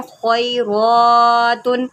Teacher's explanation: را کو بھی موٹا کریں کیونکہ اس کے اوپر کھڑا زبر ہے اور اس کو ایک الف کے برابر لمبا کریں